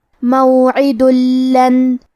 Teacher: تو ہم یہ تنوین کو لام میں ملا کے بغیر غنہ سے لیکن تشدید کے ساتھ یہ حکم کو ادا کریں گے۔ موعد لن، کلمت لن کے آخری میں نون ساکن ہے، پھر حرف الیا ہے کلمت یجدو۔ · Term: ادغام بغیر غنہ